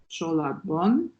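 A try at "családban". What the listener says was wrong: Il y a un accent sur le deuxième A. Chalad. Chaladban.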